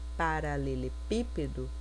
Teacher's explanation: proparoxítona é a antepenúltima sílaba tônica